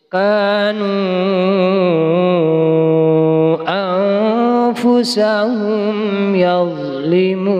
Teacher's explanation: bacaan panjangnya 5 harokat atau 2,5 alif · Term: mad jaiz munfasil